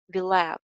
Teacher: अगर will have को link करेंगे तो h sound जो है वो skip हो जाएगी